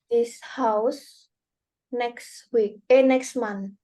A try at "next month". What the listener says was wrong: Ya, next month ya, ada TH-nya di belakang.